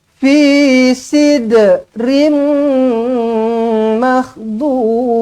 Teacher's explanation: Tanwin tak selari bertemu dengan mim sabdu, idgham ma'al gunnah, jumpa dengan mim sabdu, tak payah pening, tak payah fikir apa-apa lagi, terus rapatkan bibir, dengungkan dengan 2 harokat. Dengungkan dengan 2 harokat, dibaca dengan dengunglah.